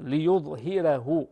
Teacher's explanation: الراء مرققة وليست مفخمة